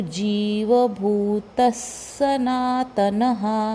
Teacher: अगला वर्ण स है, इसलिए ये विसर्ग का उच्चारण भी स रहेगा।